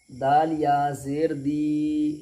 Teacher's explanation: जैसे क़ाफ अलिफ ज़बर क़ा, क्या हो गया, मक़ा, प्लस दाल या ज़ेर दी, या मद्दा होगी, इसलिए कि या सकिन से पहले दाल के नीचे ज़ेर है, इसलिए या मद्दा होगी। या मद्दा को एक अलिफ के बराबर खींच करके अदा करेंगे